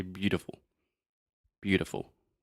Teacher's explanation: 99.9% of all English speakers will say beautiful. Beautiful. So that is, again, the flap T.